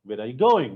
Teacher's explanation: So this neutral statement, it becomes a question. Where are you going? When I say it with a rising tone.